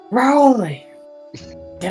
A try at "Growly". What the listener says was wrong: No, you gotta roll your R's!